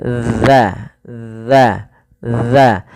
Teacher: Usahakan teman-teman mungkin bisa melihat ee daripada bibir kami untuk makhrajnya yaitu dza ujung lidah kita tempelkan daripada dua gigi kita. Maka dza dza dza.